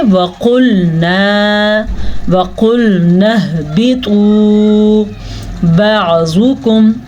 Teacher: زواد کو بھی پر پڑا کیونکہ زواد حروف مستعلیہ میں سے ہے